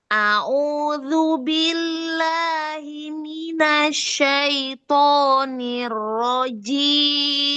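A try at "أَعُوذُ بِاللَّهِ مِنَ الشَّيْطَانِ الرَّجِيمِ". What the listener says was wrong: Ya, hamzah sama ainnya bedakan makhrajnya. A'udzu A'udzu.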